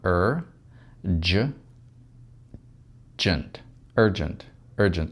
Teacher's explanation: И в конце безударный звук у нас гласный, вы знаете, это звук шва. Когда очень-очень слабый звук, он теряет свою полную силу «nt».